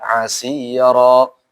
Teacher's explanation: Ingat rohnya di sini jangan monyong ya, asira. Dan juga dia tafkhim karena dia fathah kan.